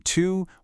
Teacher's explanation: You've got u as in two, which is high and back.